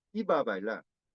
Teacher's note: Una variante oclusiva, otra variante fricativa, pero esta variante fricativa no existe en la lengua coreana, por lo tanto, muchos coreanos pronuncian la B fricativa como B oclusiva, entonces es iba a bailar, pero muchos coreanos pronuncian como B de la lengua coreana, como una oclusiva muy fuerte